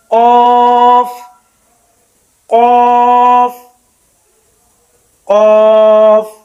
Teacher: قاف کا مخرج زبان کا آخری حصہ جب اوپر کے تالو سے لگے जहां पे कव्वा है यानी घंटी, कौफ, इसको जरा मोटा करके मुंह खोल कर पढ़ेंगे, कौफ कौफ कौफ।